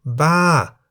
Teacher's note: For example, Ba, meaning crazy, is in the falling tone because the single syllable in the word Ba begins with a middle-class consonant Bo by Mai and has the tone mark Mai To.